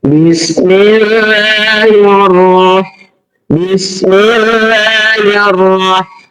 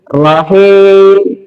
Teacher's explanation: Cara membaca ro tafhim, rahangnya terbuka. Tetapi bibir tetap nggak bisa nggak ini ya, tidak mempengaruhi bibir ke depan nggak ya.